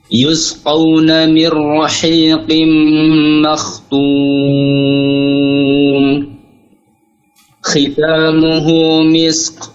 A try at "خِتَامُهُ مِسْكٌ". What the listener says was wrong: Ulangin. Jangan misk. Bukan misk. Jangan terlalu tebal. Khitamuhu misk.